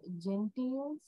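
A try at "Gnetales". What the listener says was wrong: It's not gentails. It's gnetails. Okay. G silent.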